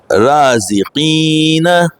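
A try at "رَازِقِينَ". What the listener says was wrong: را کو ہیوی کریے. سر آپ پہلے والے میں تھوڑا جلدی کر جا رہے ہیں, پہلے والا مدہ کو بھی پورا کریے.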